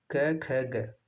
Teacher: ये तीनों क, ख, ग जीभ के मूल से उच्चारण होता है। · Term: जिह्वा मूली